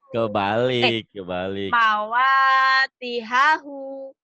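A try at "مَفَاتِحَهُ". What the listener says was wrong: Mapa bukan mawa. Ketuker.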